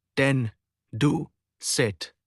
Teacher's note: Produced with a tongue tip touching or approaching the alveolar ridge, the tooth ridge behind the upper teeth. Examples, t, d, s, z, n, l.